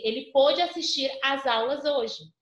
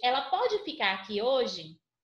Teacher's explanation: Quando ele fala do pôde, timbre fechado, o verbo poder.